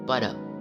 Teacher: Bunyi P seperti kata pada yang dihasilkan dengan menutup bibir